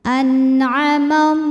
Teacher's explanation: dengan jelas artinya masih bunyi asalnya n dan tidak ditahan anamallah lam pada lafaz Allah atau lam jalalah dibunyikan secara tafkhim sebab huruf sebelumnya berbaris fathah maka dibunyikan dengan tebal